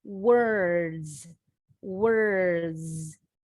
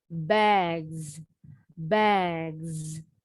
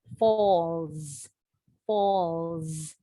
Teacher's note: When we add a final S, the S sounds like a Z.